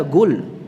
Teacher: termasuk di antara lahan jali yang merubah huruf itu seperti Qaf yang dibaca dengan G, ya. Qul dibaca gul, ya.